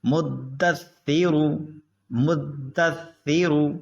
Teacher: را موٹا ہوگا، را پہ پیش ہے